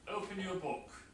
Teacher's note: if I'm making a command open your book then book is a nucleus and that falls